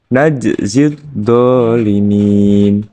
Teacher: Cara membacanya memantulkan huruf jim dengan tipis. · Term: qalqalah